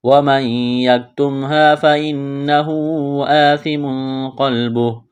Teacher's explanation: سا کو پڑھتے وقت زبان تھوڑی سی باہر نکالیں گے، سا کو نرم کرنا ہے